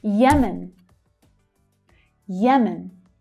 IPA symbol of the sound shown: j